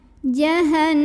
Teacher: Maka cara bacanya didengungkan. Jadi bunyi n-nya tahan. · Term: gunnah musyaddadah